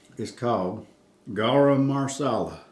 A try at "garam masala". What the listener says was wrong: No, there's no R in there. And the second word, garam masala.